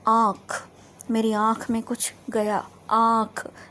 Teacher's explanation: next दूसरा अनुनासिका क्या है को भूलकर स्वर होते हैं यह इन का उच्चारण मुख और नासिका दोनों से होता है